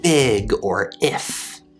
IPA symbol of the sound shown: ɪ